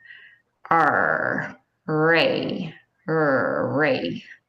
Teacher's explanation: So your tongue is almost bunched back like a spring, tongue tip up, air passes over the top of your tongue.